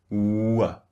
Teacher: They start very, very rounded and then they become relaxed, which means neutral. W. Can you see that?